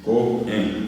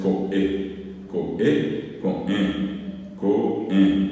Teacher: Con e es nasal en la e.